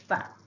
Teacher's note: bibir mulut dalam sebelah bawah diangkat mengenai hujung gigi gunting atas. Jadi di sini keluarnya huruf fa.